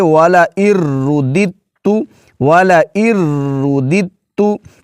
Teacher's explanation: دال کے بعد دوسرا دال نہیں پڑھیں گے، دال کے بعد تا کی آواز ہوگی کیونکہ دوسرے دال کا تا میں ادغام ہو چکا ہے